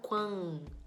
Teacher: N seguindo vogal na mesma sílaba. É um dígrafo vocálico, indica que aquele A é nasal. Quan, você faz assim, ó, e nasaliza.